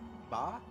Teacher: closing your lips entirely and then kind of popping out air with them while voicing